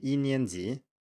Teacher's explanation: Then we have a second tone, 年, and then another second tone, 级. So the middle tone here can vary a bit and turn into a first tone. So instead of saying 年, it turns into 年.